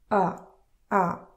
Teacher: It's not clear ah, it's not clear o, it's something in between. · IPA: [ə]